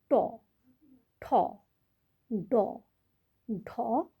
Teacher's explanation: জীভটা আমাদের মূর্ধা স্পর্শ করছে। তালুর ওপরের যে অংশটা সেটা হলো মূর্ধা। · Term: মূর্ধন্য বর্ণ